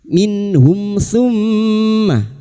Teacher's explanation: mim yang bertasdid guna musyaddada kita dengungkan selama 3 harakat · Izhar syafawi. Mim sukun dibaca jelas tanpa mendengung.